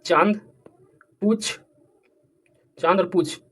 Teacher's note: अनुनासिक का उच्चारण मुख और नाक से होगा और इनके उच्चारण में लघुता और कोमलता भी दिखाई देगी